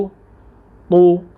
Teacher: मैं होंठ गोल कर रहा हूँ क्योंकि पेश में हमने होंठों को गोल करना है